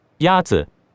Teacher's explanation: The first tone is a high, level tone.